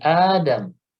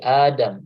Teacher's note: Tapi dia sudah punya nama khusus yaitu namanya mad badal. Di Adam yang dibaca panjang 2 harokat itu mad badal.